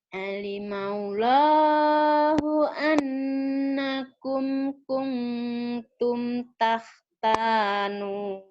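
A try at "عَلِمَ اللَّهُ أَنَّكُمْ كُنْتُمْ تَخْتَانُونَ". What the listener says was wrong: Alimal, samberin ke lafal Allahnya. Alimallahu annakum kuntum tahtanu Alimallahu annakum kuntum takhtanuna anfusakum.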